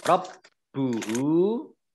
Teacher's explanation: Rob buhu, baknya dibaca double, ada tasdidnya.